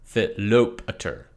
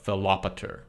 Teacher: the accent is on the alpha, Philopater, because that O is an omega, a long vowel, so the accent can fall no further back.